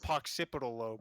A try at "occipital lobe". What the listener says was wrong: I think you have a lisp there when you're pronouncing it. It's occipital lobe.